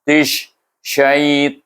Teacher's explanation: Maka kita baca ta itu dengan idgham syamsi, dimasukkan huruf ta kepada huruf shin. Bunyinya tish, bunyi hamas.